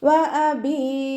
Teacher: മദ് ആരിദിൽ വഖഫ് ചെയ്യുമ്പോൾ 2 4 6 ഹർക്കത്ത് നീട്ടി വഖഫ് ചെയ്യുക